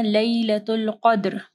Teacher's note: قاف کو ہیوی پڑھنا ہے، دال کے اوپر جو ہے قلقلہ کرنا ہے